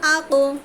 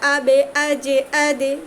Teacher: কারণ কফ ত এই দুটো কিন্তু মোটা হরফ, মোটা হরফ উচ্চারণের সময় ভারী হয়। আর বা, জিম, দাল এগুলো পাতলা হরফের জন্য আওয়াজটাও পাতলা হয় এবং নিচের দিকে যায় · আকো ভারী হয়েছে এবং উপরের দিকে গেছে আওয়াজ, আকো উপরের দিকে গেছে, কিন্তু বাকি তিনটা আবে, আজে, আদে নিচের দিকে গেছে পাতলা হওয়ার কারণে। এটা মূলত হরফের উপর ডিপেন্ড করে, হরফ মোটা হলে আওয়াজ মোটা, হরফ পাতলা হলে আওয়াজ পাতলা আর কি। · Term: কলকলা